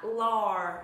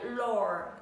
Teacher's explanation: Hơi cong lưỡi vào, hơi miệng hơi tròn lại vì đây là chữ O dài